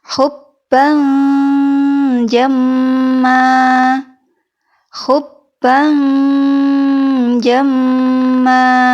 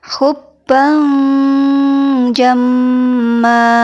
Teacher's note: Jadi tengah-tengah antara pengucapan huruf n dan pengucapan huruf eng. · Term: ikhfa